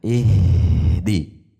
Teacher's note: tidak ada jeda, mengalir, tidak ada pantulan